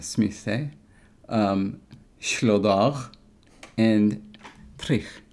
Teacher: you'll notice that the L and the R are voiceless in these.